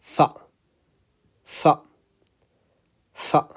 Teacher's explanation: I'm using the upper front teeth with the bottom lip. Okay? Upper front teeth with the bottom lip.